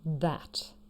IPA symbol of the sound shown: ð